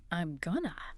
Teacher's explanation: That single fluent reduction, gonna, is now one rhythmic unit, not 3 separate words